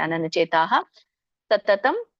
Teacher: ಚೇತಾಹ ಅಲ್ಲಿ ವಿಸರ್ಗ ಇದೆ ಹಾಗಾಗಿ ಅಲ್ಪವಾಗಿ ಉಚ್ಚರಿಸಬೇಕು